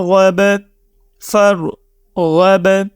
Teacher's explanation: اس word میں آپ دیکھیں کہ را کو ہم موٹی آواز میں پڑھیں گے، ٹھیک ہے، غائن کو بھی ہم موٹی آواز میں پڑھیں گے، اور تھرڈ پہ ہم با کے اوپر قلقلہ کریں گے، تو با ہمارا حروف قلقلہ ہے۔